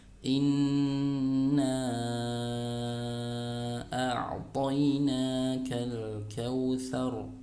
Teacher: ditahan dulu bacanya ya, tidak tergesa-gesa dan dengung dari hidung